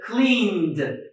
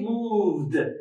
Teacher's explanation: If a word ends in voiced consonant, okay, voiced consonant, we are going to add ED again, but we are going to pronounce it as voiced D because D is voiced